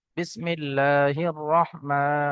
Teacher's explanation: র হা জাবার রহ, মিম খারা জাবার মা, বিসমিল্লাহির রহমা। খারা জাবার আলিফ মাদ্দার মতো এক আলিফ পরিমাণ টান দিতে হবে